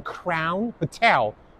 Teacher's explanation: Hotel stresses on the second syllable.